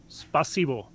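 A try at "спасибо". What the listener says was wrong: Spasiba. Yeah, spasiba. This means it's thank you, not spasibo. With an A.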